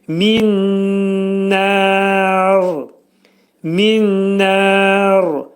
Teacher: Burada nər kəlməsində nə məddi ariz olacaq. 4 hərəkət miqdarında uzadılacaq.